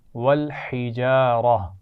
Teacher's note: والحجارہ، اس میں ہا کے مخرج کا خیال رکھنا ہے، اور آخر میں گولتا ہے یہاں پر، تو ہم نے وقف کرتے ہوئے اس کو ہا ساکن سے بدلا ہے